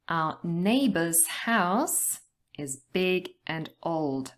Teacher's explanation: we are going to stress the nouns neighbors house and also the adjectives big and old